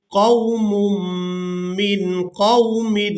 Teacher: میم کو میم مشدد کے ساتھ ملائیں گے